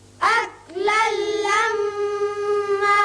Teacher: لام کے اوپر 2 زبر تنوین ہے، آگے لام آ رہا ہے، لہذا ادغام ہوگا بغیر غنہ. میم مشدد ہے، اس کو بھی غنہ کے ساتھ پڑھیں گے.